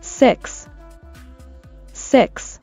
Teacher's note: S▁は無声音、イはエの口でイでしたよね